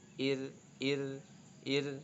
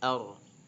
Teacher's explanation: ketika berharokat kasroh huruf hamzahnya alifnya maka tipis ir beda dengan ar